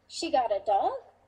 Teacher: the intonation went way up to indicate surprise